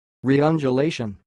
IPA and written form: riːʌndjuːˈleɪʃ(ə)n (reundulation)